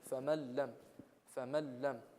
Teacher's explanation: We don't do ithar. We do idgham without ghunna. We merge without holding.